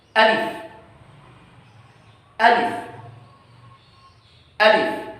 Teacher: Alif ada di rongga mulut, tepatnya dekat tenggorokan yang atas.